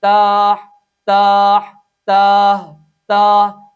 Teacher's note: Number 4، بعض لوگ اس حرف کو ادا کرتے ہوئے اس کے آخر میں حمزہ یا ہا یا پھر ہا کی آواز پیدا کر دیتے ہیں، چنانچہ وہ پڑھتے ہیں تا تا، جھٹکا دے کے پڑھیں گے اور حمزہ پیدا کر دیں گے، یا پھر توجہ نہیں کریں گے جس کی وجہ سے اس حرف کے آخر میں ہا یا پھر ہا کی آواز پیدا ہو جائے گی، تاہ تاہ تاہ تاہ۔